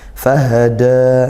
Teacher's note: makhrajnya tenggorokan paling jauh, paling pangkal tenggorokan ya, seperti makhrajnya huruf hamzah